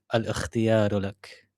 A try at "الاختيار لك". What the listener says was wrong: الاختيار. Instead of saying الاختيار, you like you can't put sukun on the lam in this word. الاختيار.